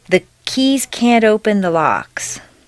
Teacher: if you have trouble with can't before a word that starts with a vowel such as open put in a very small D